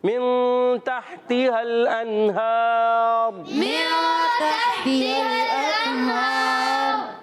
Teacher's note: ہا پر کھڑا زبر ایک الف کھینچ کر ادا کریں گے